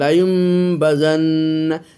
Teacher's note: নুন সাকিনকে মিম দ্বারা পরিবর্তন করে পড়তেছি, বা কিন্তু পড়তেই হবে। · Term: একলাব